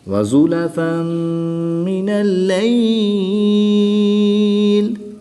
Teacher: وَأَقِمِ الصَّلَاةَ طَرَفَيِ النَّهَارِ وَزُلَفًا مِّنَ اللَّيْلِ یا ساکن سے پہلے لام پر زبر ہے تو یالین ہوگا، یالین کے بعد لام کی زیر کو وقف کی حالت میں ساکن کریں گے اور یہاں پر مد لین عارض ہوگی، اس کو بھی 2 سے 3 الف تک کھینچ کر پڑھیں گے